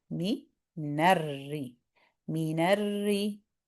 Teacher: So, we're going to um so, even though when a fatha joins into a ra, the ra is heavy, but if that a ra has a shadda and the vowel it's carrying is a kasra, then basically if ra has kasra, it's light. Even if you have a heavy sound joining into it. So, what we want to be careful of here is we don't want to say minnar. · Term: light the ra